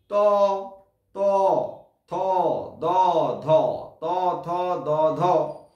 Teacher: জিহ্বার অগ্রভাগ দাঁতে গিয়ে স্পর্শ করবে। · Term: দন্ত ব্যঞ্জন